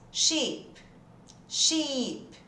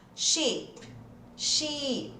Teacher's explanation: som de I, bem estendido. Imagina que tem um I com acento mesmo ali. O SH você já sabe que é sh, né?